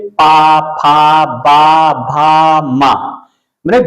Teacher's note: दोनों होठ आपस में मिल जाते हैं चिपक जाते हैं तो मतलब ओठ से उच्चारण होता है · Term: ओष्ठ